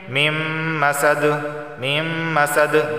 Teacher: دال حرف قلقلہ میں سے ہے تو لہٰذا یہاں پہ قلقلہ ہوگا، یعنی آواز مخرج سے ٹکرائے گی